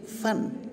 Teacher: नीचे के होंठ ऊपर के दांतों को टच करते हैं